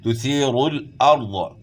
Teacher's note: ضاد موٹے حروف میں سے ضاد کو آپ نے موٹا پڑھنا ہے